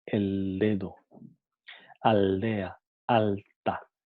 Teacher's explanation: Entonces pasa a ser un sonido dental. En su articulación, la punta de la lengua se apoya en la parte de atrás de los incisivos superiores.